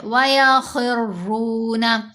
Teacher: را کو بھی موٹا پڑھیں گے، اوپر پیش ہے، را کے اوپر جب زبر ہو یا پیش ہو تو را کو موٹا پڑھتے ہیں، اور را کے نیچے زیر ہو تو را کو باریک پڑھتے ہیں.